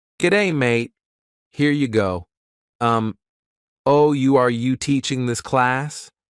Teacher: The typical example in Australia is the rising intonation, That's rising intonation when your voice sort of goes up at the end like that, at the end of sentences